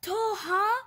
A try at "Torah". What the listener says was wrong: It's Torah. There's an R there.